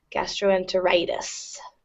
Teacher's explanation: So primary stress falls on that long I on the suffix. Gastroenteritis.